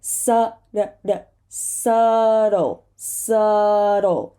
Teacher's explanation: And this last word, remember the dark L, is subtle. This T becomes a flap T because it's trapped between two voiced sounds.